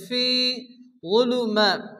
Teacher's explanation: ফি মাদ্দা এক টেনে পড়তে হবে